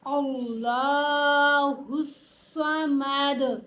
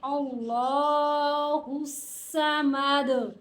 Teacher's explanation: ساکن کی صورت میں دال کے اوپر کلکلا ہوگا